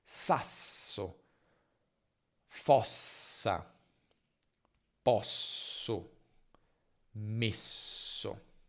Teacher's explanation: per pronunciare la doppia S dobbiamo semplicemente allungare la consonante, la S, e accorciare la vocale precedente